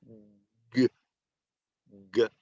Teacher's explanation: You're making a sound with your vocal cords before you finish saying the letter G. So you're saying the sound g, and you hear that before I even open my mouth.